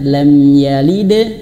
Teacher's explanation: Yang betul itu adalah lam yalid, mantul dan mengalir, awas tidak terputus suara. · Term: qalqalah